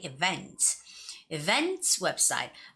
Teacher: And I know a lot of students, some people you might say events, but no, that's not the right way of saying that word. The word's stress is on the second syllable, so you have to say events.